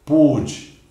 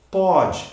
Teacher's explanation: Aqui o som é fechado. Pôde, timbre fechado. Aqui eu abro. Pode, mudou, não é? Timbre aberto.